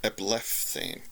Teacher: The only trick here is the P at the end of the blep stem, when it runs up against the theta, which is a fricative consonant, the th sound, it makes the P go rough or fricative as well. So instead of blep, the stem becomes blef with an F sound.